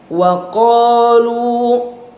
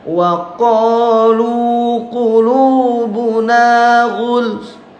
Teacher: wa qa mad asli, lu mad asli juga jadi dua harokat panjangnya. Jangan terlalu panjang.